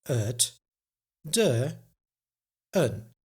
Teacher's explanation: But het is usually also pronounced as ut. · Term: the schwa